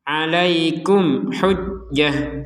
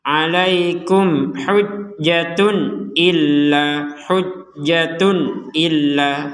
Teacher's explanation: Misalkan kita gabung kepada kata berikutnya, maka dia akan kembali sebagai huruf ta